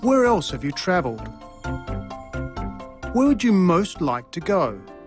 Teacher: questions the interviewer asks are were type questions starting with where did you notice that the pitch of his voice fell at the end of both questions